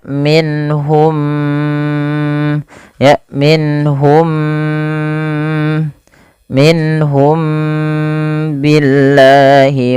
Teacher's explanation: mimnya tidak dikasih harakat, artinya dia mimnya mati. Ketemu dengan huruf ba, maka ini wajib ditahan suara mimnya. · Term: ikhfa syafawi